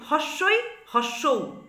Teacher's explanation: স্বরধ্বনি 7টির মধ্যে হস্যই, হস্যৌ উচ্চারণ করলেই দেখবে জিহ্বাগ্র যে উচ্চ বিন্দু সেই স্থানে অবস্থান করছে, অর্থাৎ জিহ্বাগ্র মুখবিবরের মধ্যে খুব উচ্চে অবস্থান করছে। এরপর এই কারণেই হস্যই আর হস্যৌকে বলা হচ্ছে উচ্চ স্বর।